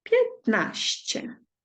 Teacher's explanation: тут майже не чути носовості вона трошечки губиться всередині слова через приголосніще ну тут як дуже так постараємося то можемо її